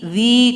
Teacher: Siratal ladzi, zi 2 harakat, huruf dzanya ujung lidah dengan ujung gigi